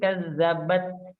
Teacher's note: Karena tak sukun itu ada udara yang sedikit yang keluar kan, dan itu persis hampir sama seperti makhrajnya dan sifatnya sa.